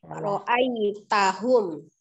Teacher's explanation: Tidak terlalu panjang. Ra'nya dua harokat.